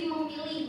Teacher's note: fonem p ketika dia bertemu dengan huruf menasal dia akan jadi bunyi bilabial nasal